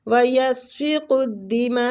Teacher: ماں کے اوپر جو مد ہو رہی ہے مد واجب متصل ہو رہی ہے، ماں کو 4 سے 5 الف کھینچیں گے · کاف کو دال کے ساتھ ملائیں گے، تشدید ہے